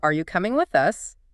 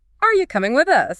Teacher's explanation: Hear that reduction? You becomes yah. But the melody, the overall up and down shape is still pretty similar, just faster.